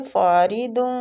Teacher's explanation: را باریک پڑی جائے گی زیر کی وجہ سے